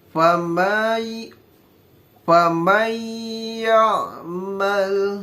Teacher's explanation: Agak ditahan sedikit dan menggunakan dengung, menggunakan gunah. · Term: idgham bigunah